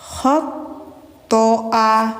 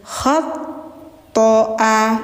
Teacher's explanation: Jadi kayak ada suara ngorok dikit, tapi tapi tidak berlebihan ya. Jangan berlebihan.